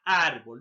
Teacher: grave también se le conoce como parásitos o llanas de amino la mayor fuerza de voz está en la penúltima sílaba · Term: graves o paroxítonas